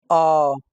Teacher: मध्यम स्वर जिन स्वरों का उच्चारण जीभ के मध्य भाग से होता है उसे मध्य स्वर कहते हैं जैसे अ यह हमारे जीव के बीच वाले भाग से होता